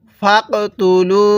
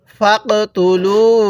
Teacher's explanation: কফের মধ্যে ধাক্কা দিব, কারণ কফটা হলো কলকলার হরফ